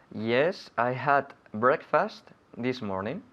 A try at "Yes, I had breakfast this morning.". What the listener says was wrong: Good, okay, repeat again, but not so much breakfast. Breakfast. Fust. Breakfast.